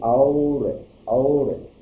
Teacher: तो और में कंठ और ओष्ठ दोनों का उपयोग करना पड़ता है। और कंठ और ओष्ठ दोनों का उपयोग करके बोलते हैं, इसे कंठोष्ठ कहा जाता है।